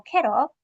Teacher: T and L sound are both alveolar sounds. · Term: syllabic L